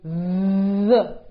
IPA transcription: ð